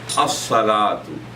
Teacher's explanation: The letter sad is pronounced twice.